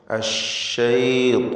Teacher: താഇനും അതിൻ്റെ ദീർഘാക്ഷരമായ അലിഫിനും പൂർണ്ണമായ തഫ്ഖീമാണ്.